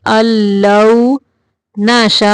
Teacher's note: ان نہیں پڑھنا، نون کو نہیں پڑھنا، حمزہ کو لام کے اندر ملائیں گے